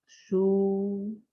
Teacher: lips are round and the mouth is almost closed